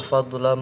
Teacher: Idgham bi gunnah fadlam, ini mendengung karena ada huruf mim yang ditasdid. Ada tanwin bertemu dengan huruf mim.